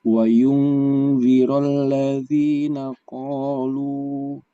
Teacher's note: Jadi qalu ya ketika berhenti jadi tetap dibaca lu ya, dhammah u. Jadi itu menjadi mad tabi'i.